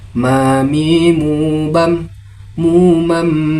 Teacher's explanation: Huruf mim seperti sebuah tongkat. Adapun makhrajul hurufnya terletak pada merapatkan kedua bibir disertai dengung dari rongga hidung.